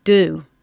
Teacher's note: Due sounds like it's a silent Y after the D. Due, but we say do. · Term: yod dropping